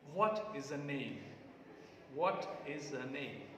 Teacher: Stress is on what and name.